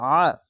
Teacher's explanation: আইনটিকে গলা চিপে এবং মোটা করে পড়বেন